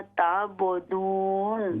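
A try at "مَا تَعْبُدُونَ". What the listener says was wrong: मा ता आइन को क्लियर कीजिए। मा ताबुदून। ताबुदून नहीं है, ताबुदून। मा ताबुदून।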